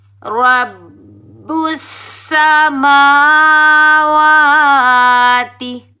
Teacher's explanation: را کے اوپر زبر آنے کی وجہ سے را کو ہم پور پڑھیں گے، موٹا پڑھیں گے